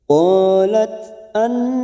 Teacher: ada fathah diikuti Alif Mad Thobi'i dua harakat kita panjangkan